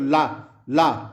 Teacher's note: ला पार्श्विक व्यंजन है जिसके उच्चारण में हवा जीभ के पार्श्व अर्थात वगल से निकल जाए